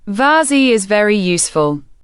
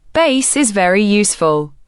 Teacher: Bengali speakers often pronounce V as B due to the absence of the V sound in Bengali.